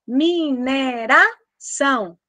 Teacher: A é sempre vogal, e O com som de U, semivogal. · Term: ditongo decrescente nasal